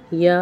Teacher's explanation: जबान के दरमियानी हिस्से को तालू से चिमटाकर या अदा होता है